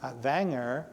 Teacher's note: with the the V sound instead of the W